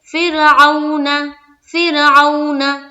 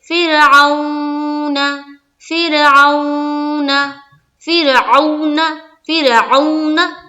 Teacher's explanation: نہ ہی سختی کرنی ہے لین میں اور نہ ہی کھینچنا ہے، جلد ادا کرنا ہے اور نرمی سے ادا کرنا ہے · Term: واولین